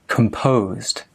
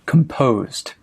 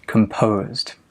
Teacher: So the stress is on the po, composed. Stress is on the second syllable